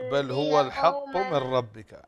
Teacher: عندنا إدغام بغير غنة، اللام والراء إدغام بغير غنة